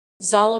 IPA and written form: ˈzaːla (Zala)